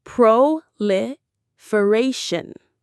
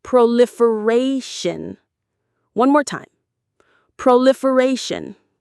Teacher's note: The stress is on that fourth syllable, the ray.